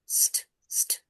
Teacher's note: But the difference is, in blending, we can hear s and t separately